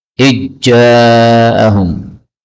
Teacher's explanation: zal ketemu dengan jim, ini boleh idgham